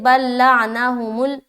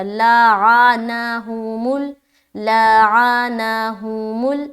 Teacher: اچھا یہاں پر عین کو صاف ستھری آواز میں ادا کرنا ہے، واضح طور پر، ورنہ بعض اوقات یہ جو لام ہے، عین جو ہے نا، عین کے اوپر جو زبر ہے وہ زبر واضح نہیں ہوتی، زبر ایسا لگتا ہے جزم میں تبدیل ہو گیا